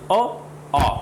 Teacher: आपने देखा होगा जीभ कहीं पे भी टच नहीं हुई, बिल्कुल जीभ का कहीं भी ऊपर नीचे मुंह में संपर्क नहीं हुआ, और आवाज़ कहाँ से आई, कंठ से, यानी गले से, अ, आ। तो इसका मतलब है अ और आ, ये दोनों स्वर जो हैं वो कहाँ से हैं, कंठ से निकल रहे हैं। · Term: कंठ्य